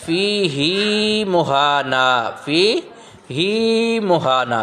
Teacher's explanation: اس کلمے میں ہائے ضمیر کو بغیر کھینچے پڑھنے کی بجائے کھینچ کر پڑھیں گے